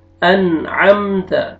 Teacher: میم سکون عم، انعم، تا فتحہ تا، انعمت، یہاں پہ دیکھیں نون ساکن کے بعد حروف حلقی میں سے عین، یہاں پہ آپ نے اظہار کرنا ہے